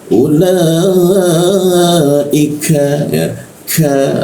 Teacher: huruf ka dilekukan siku tenggorokan, lidahnya kita turunkan sehingga ada hembusan udara